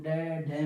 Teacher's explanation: जब हम डे ढे बोलते हैं ना, तो हमारी जीभ जाके ऊपर मूर्धन्य पर लगती है, तो मूर्धन्य हमारी जीभ को नीचे फेंकता है, तब जाकर इनका उच्चारण होता है। और इनको हम द्विगुण व्यंजन भी कहते हैं, ठीक है।